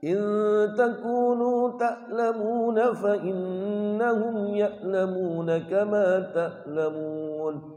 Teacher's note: ain ini makhrajnya di tenggorokan tengah-tengah. Tenggorokan bagian tengah.